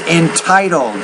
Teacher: The T sound you have to pronounce with more air.